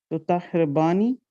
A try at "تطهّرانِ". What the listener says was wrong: No, there's no bani. تطهراني. ha ra ta ha ra. تطهر تطهراني. تطهراني.